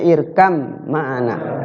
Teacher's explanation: ba ketemu mim irkab mana irkab mana itu dibacanya irkam maana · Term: mutaqoribain